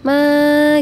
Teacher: ma itu mad asli atau mad tabi'i dibaca 2 harokat atau 2 ketukan. Ma gitu, karena ada fathah pada huruf mim bertemu dengan alif.